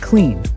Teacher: the N at the end of clean is also voiced so it's cleaned easy right finally we have the E pronunciation